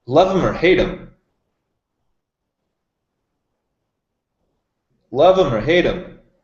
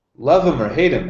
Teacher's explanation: As you can see, the H gets reduced. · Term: reduction of the H